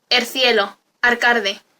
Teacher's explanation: neutralización de líquidas implosiva